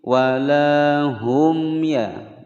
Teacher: mim sukun bertemu ya, dibaca jelas, hukum bacaan idhar syafawi. Jadi idhar syafawi itu Ketika ada mim sukun di depannya sini tidak bertemu dengan huruf mim atau huruf ba, ya, maka dia dibaca dengan jelas.